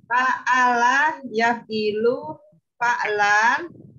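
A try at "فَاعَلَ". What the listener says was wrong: Ibu panjang pendeknya diperhatikan atuh kalau belajar bahasa Arab. Fa'ala. Diperhatikan panjang pendeknya itu mah fa'ala itu. Fa'ala. Panjang apa? Cari yang fa-nya panjang, Bu.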